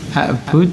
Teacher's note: Itu tetap qalqalah, dimatikan, diwakafkan.